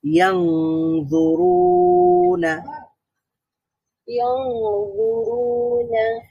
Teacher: ইয়ানজুরুনা, নুন এটা মুতাওয়াসসিতা অথবা বাইয়িনার হরফ, আওয়াজ পুরোপুরি জারি থাকবে না, বন্ধ হবে না, কিন্তু নুনের পরে একটা জ থাকার কারণে এখানে আরো একটা সিফাত যোগ হবে, সেটা হচ্ছে ইখফা।